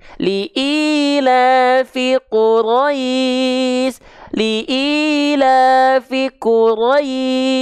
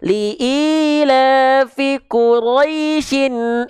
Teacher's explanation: Quraisy di sana lin bertemu dengan shin sukun, shin yang disukunkan. Makanya panjang madlin.